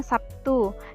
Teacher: Sebagai contoh, kata Sabtu dalam bahasa Indonesia lazim diucapkan Sabtu, yakni terlihat adanya bunyi B yang berubah menjadi bunyi P sebagai akibat pengaruh bunyi T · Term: asimilasi